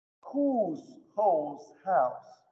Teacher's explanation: изменение у долгого, которое проходит через стадию оу и не спадает в самый низ в дифтонг ау